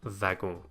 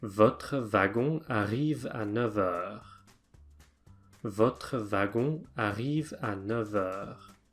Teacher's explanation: the French pronounce it the same way as the Germans with a V sound